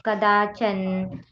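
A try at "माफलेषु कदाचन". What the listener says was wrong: ಕದಾಚನ್ ಅಂತ ಹೇಳಿದ್ರಿ ಅಲ್ಲಿ ವ್ಯಂಜನ ಇಲ್ಲಕಾಚನ ಕದಾಚನ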